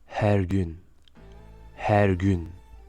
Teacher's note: Le H est légèrement expiré